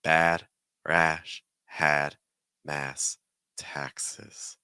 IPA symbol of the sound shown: æ